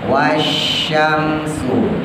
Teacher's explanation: Wasyamsu, shin yang pertama tebal, sin yang kedua tipis.